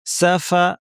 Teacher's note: দাঁতকে ঠোঁটের উপর এনে ফা বলার জন্য রেডি করে পুরোপুরি চাপ দিব না নাক থেকে গুনা করব বলার সময় প্রপারলি যেটা আমরা বলেছি ফ্যাসফ্যাসে আওয়াজ করব প্রচুর বাতাস